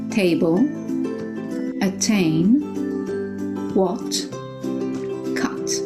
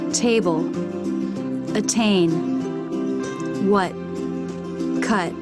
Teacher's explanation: in American English they tend to drop the T in the final position